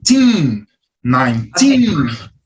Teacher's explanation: A minha sílaba tônica é o tin. Ela vem mais forte.